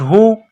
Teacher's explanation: یہ گول ہا ہے، منہ سے ہوا نکالنے کی طرح اس کو پڑھتے ہیں